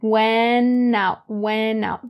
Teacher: you drop the T in went and you'll say went out, went out. Bring that n over to out. And this just sounds more native because typically we don't say went out, went out.